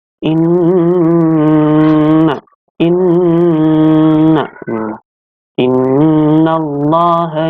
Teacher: ada bacaan gunnah, yaitu nun tasydid yang bertasydid, dibacanya dengung.